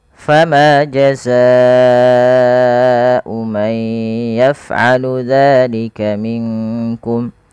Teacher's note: panjangkan huruf Ma dua harakat fama tapi jangan terlalu berlebihan dalam membaca Mad thi'i kemudian jaza